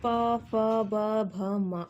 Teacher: जब पा बोल रहे हो तो दोनों होंठ आपस में टकरा रहे हैं, बिना होंठ टकराए बोल के दिखाओ, पा नहीं बोल सकते, तो इसको बोलते हैं होस्ट।